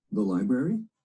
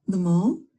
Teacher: we use rising intonation